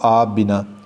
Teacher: آپ کا آخری حرف پے ہے اور بنا کا پہلا حرف بے ہے، یہ دونوں قریب المخارج ہیں اور قریب المخرج ہونے کی وجہ سے ان دونوں کا اکٹھا اس طریقے سے پڑھنا ذرا دقت والا کام ہے۔